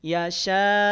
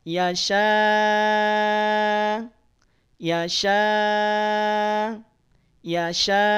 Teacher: Jadi setelah 6 harokat kita panjangkan shinnya, langsung kita rem bunyinya.